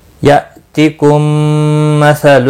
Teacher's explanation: یأتیکم حمزہ ساکن کو تھوڑا جھٹکے کے ساتھ پڑھیں گے، اور میم ساکن کے بعد دوسرا میم آیا ہے، ادغام شفوی ہوگا، گنہ کے ساتھ پڑھیں گے